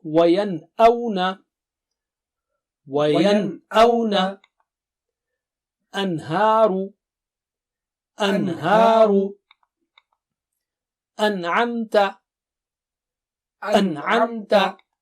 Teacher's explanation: So the first rule is, if Noon Sakina is followed by Hamza ha, Ain ha or Ghain ha, you recite Noon Sakina normally, express the Noon sound